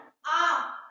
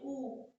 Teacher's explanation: जब हम आ बोलते हैं आ, तो हमारा ओठ फैल जा रहा है, ना कि वृत्त के आकार में गोल हो जा रहा है। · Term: आवृत्तामुखी